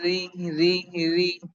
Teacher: দুই ঠোটকে দুইদিকে সম্প্রসারিত করে দিয়ে দুই ঠোটকে দুইদিকে ছড়িয়ে দিয়ে মুখে হাসি হাসি ভাব রেখে পাতলা করে উচ্চারণ করতে হয় । যেমন র ঋ ঋ পাতলা ঋ যদি মোটা করতাম তাহলে